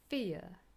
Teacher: if you look carefully you will notice that the schwa is missing